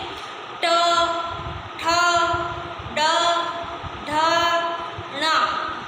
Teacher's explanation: उसी प्रकार से मूर्धा, मूर्धा का अर्थ होता है छत, यानी हमारा जो ये मुख है इसके ऊपर वाला जो भाग है उसे हम कहते हैं मूर्धा। तो हम जब ट का उच्चारण करते हैं तो हमारी जीवा मूर्धा को स्पर्श करती है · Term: मूर्धन्य वर्ण